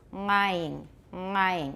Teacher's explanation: He did have a uvular nasal tap.